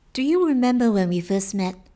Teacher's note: 在美式英语中，在元音后面的 T 叫做 stop T， 只是做一个舌头的位置，但是并不送气，不把 T 的音给发出来